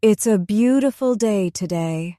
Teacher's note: Notice how the words flow into one another. Beautiful connects softly with day.